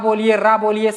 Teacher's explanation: ला ना तो पूरी तरह से दांत पर टच होगा और ना ही तालू पर पूरी तरह से टच होता है। तो कहां पर टच होता है, दांत जहां पर आपकी क्या होती है, जड़ होती है दांत की, वहां पर टच होती है। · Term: दंतमूल या वर्थ व्यंजन